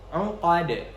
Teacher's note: Huruf dal di sini harus kita qalqalahkan. Jadi bunyinya uqad.